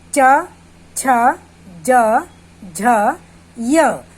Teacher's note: इन वर्णों को बोलते समय हमारी जीभ तालव्य को छू रही है, इसलिए इसको हम तालव्य कहते हैं।